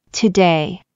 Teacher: 舌の先っちょを、ベロの先っちょを上の歯の裏の歯茎につけてから急に弾くように離します